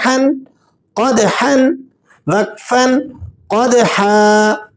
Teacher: اگر آپ نے اس کو حلق سے زور کے ساتھ نہیں پڑھا تو یہ ہا بن جائے گا اور اس کا تلفظ غلط ہو جائے گا۔ آپ نے اس کو ہا کو وسط حلق سے، یعنی جہاں حلق میں ابھری ہوئی ہڈی ہوتی ہے وہاں سے ذرا زور کے ساتھ پڑھنا ہوتا ہے